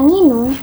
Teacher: keunikan muncul karena diawali dan diakhiri bunyi sengau yaitu eng yang jarang sekali ada di bahasa Indonesia